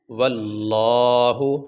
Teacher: یہ لفظ اللہ سے پہلے زبر آ جائے یا لفظ اللہ سے پہلے پیش آ جائے تو لفظ اللہ کو موٹا کیا جائے گا، لفظ اللہ پہ آواز جو ہے موٹا کریں گے